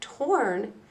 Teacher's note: if we take the word torn with the R controlled of OR, we still hear that long O sound.